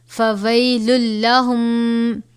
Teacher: فویل لہم، یہاں پر بھی ہم تنوین کے بعد حرف یرملون میں سے لام ہے تو غنہ نہیں کریں گے